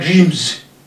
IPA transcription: dri:mz